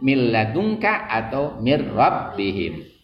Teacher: Wadghim bila gunnatin, dan idghamkanlah dengan tidak gunnah fila min wara, ketika nun mati atau tanwin ketemu dengan huruf lam atau huruf ro. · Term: idgham bila gunnah